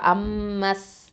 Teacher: இந்த இடத்துல மீம் ஷத்தால என்ன பண்ணணும்? தஷ்தீது இருக்குது. அப்போது அக்மல் குன்னா கொடுக்கணும்.